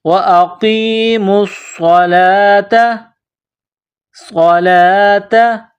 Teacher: کے ساتھ ملانا ہے، میم کو صاد کے ساتھ ملانا ہے، صاد میں سیٹی کی آواز پیدا کرنی ہے، صاد کو موٹا کرنا ہے